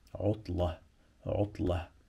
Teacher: مش هنطق التنوين طالما هقف انا هنا